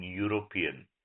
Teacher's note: It begins with the vowel but sounds like y e o r o p i n. So it begins with a consonant initial y sound. So you use a.